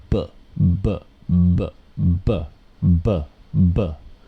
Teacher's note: you can hear that very distinct vibration right this is not coming from my lips it's coming from throat